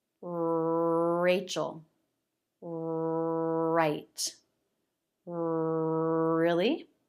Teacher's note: the middle lifts the front part pulls back so the tip is not all the way forward and is not touching anything